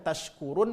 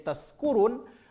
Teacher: Kalau shin tempat keluar hurufnya adalah tengah lidah, sedangkan huruf sin tempat keluar hurufnya adalah ujung lidah.